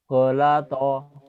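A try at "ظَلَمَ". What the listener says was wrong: Golazo. Bukan golato ya. Golazo. Ada titiknya betul.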